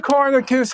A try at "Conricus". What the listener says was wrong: It's Conricus. The N is before the R.